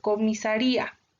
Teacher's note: Palabras graves. Se tiene mayor fuerza en la penúltima sílaba